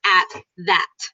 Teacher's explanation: I don't add so much air at the beginning for the th.